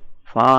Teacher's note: మన గొంతు మీద చేయి పెట్టుకుంటే ఫా అన్నాం అనుకోండి, ఫా అంటే ఆ ప్రకంపనాలు రావు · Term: వాయిస్లెస్